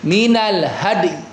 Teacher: Jadi dalnya qalqalahin ya ee kita isyaratkan dengan bibir yang meringis.